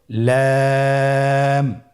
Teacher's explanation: পরবর্তী হরফ লাম। লাম হরফটি উচ্চারণের ক্ষেত্রে অবশ্যই বারিক হবে এবং তিন আলিফ টেনে পড়তে হবে।